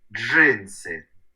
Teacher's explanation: перший звук Дж твердий приголосний далі и голосний н твердий приголосний с твердий приголосний и голосний